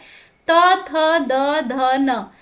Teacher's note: तो इनका उच्चारण करते समय जो हमारी जीभ है उसका टकराव जो है, स्पर्श जो है दंत से हो रहा है, दांत से हो रहा है, इसीलिए इनका उच्चारण स्थान जो है वो है दंत। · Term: त वर्ग